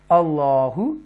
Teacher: हम उनको तफ़ख़ीम के साथ पढ़ेंगे क्योंकि अल्लाह के नाम से पहले ज़बर आ रही है। मोटा पढ़ेंगे, बोल्ड पढ़ेंगे, डीपली पढ़ेंगे उसको